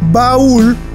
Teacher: el acento recae sobre la vocal cerrada, que en este caso es la U, destruyendo el diptongo, formando un hiato y tildando la vocal cerrada en la que recayó el acento.